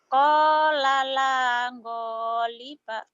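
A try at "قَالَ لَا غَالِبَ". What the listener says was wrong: Aduh, mau diciriin orang Jawa ya. Ngoliba wae. Gofur. Go, gedung olahraga. Jangan ya. Qala la ghaliba. Go. Iya, go melu ya. Go. Go gudang garam. Go. Gofur. Ya, maghrib. Jangan mangenib.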